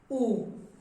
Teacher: U. Close, short, and fast.